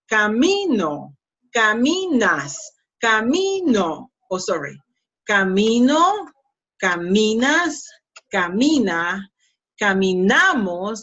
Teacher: the strongest syllable is not the last one, it's the second to last.